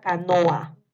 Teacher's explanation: Canoa tiene dos vocales que están juntas y estas vocales son abiertas, tanto la O como la A. Entonces van separadas en diferentes sílabas. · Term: hiato simple